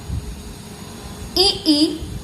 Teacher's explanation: ई और पूरा च वर्ग, य और श का उच्चारण स्थान तालु है। तालु से उच्चारित वर्ण तालव्य कहलाते हैं।